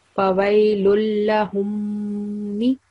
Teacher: So 2 second nasal sound.